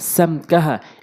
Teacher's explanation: ইয়াম লিকুনা, সিন মিম জবর সাম, কাফ জবর কাহা, আলিফ জবর হ্যাঁ, সাম কাহা। এখানে ইজহারে স্বাভাবিক, গুন্নাহ ছাড়া স্পষ্ট করে পড়তে হবে